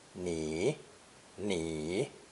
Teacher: The second person pronoun pronounced third tone